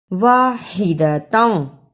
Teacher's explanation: کر نکالا، منہاجا میں ہا کو نرم زبان سے ادا کیا، واحدتم حلق سے ہا کو رگڑ کر نکالا